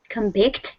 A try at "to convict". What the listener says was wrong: Yeah, here it's a verb, isn't it? So it's not convict, it's to convict. So I gave you the wrong pronunciation earlier, but that's because I didn't know if it was a noun or a verb. To convict, second syllable.